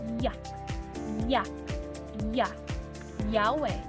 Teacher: sa punto ng artikulasyon na palatal na bahagi na pangala-ngala at sa paraan ng artikulasyon na malapatinig